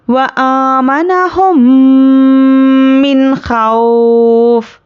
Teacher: हम नून को ज़ाहिर करके जल्द अदा करेंगे। खौफ, तो वाव पर जज़म और उसके पहले ज़बर वावलिन नरमी से जल्द अदा करेंगे। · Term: इजहार